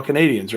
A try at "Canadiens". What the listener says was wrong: No, it's not Canadians. It's Canadiens. Yes, it's not Canadians. It's Canadiens. spelled with an E instead of an A, and it's the French pronunciation for Canadian.